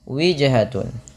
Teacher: pantulkan pada lafal huruf jim yang berharokat sukun karena ia bacaan qalqalah. Kesalahan yang terjadi dalam baca qalqalah itu tidak mantul.